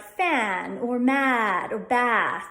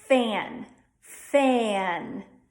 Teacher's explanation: like fan or mad or Bass that would be more Midwest we're doing an e e sound as in ebb and then adding a schwa after that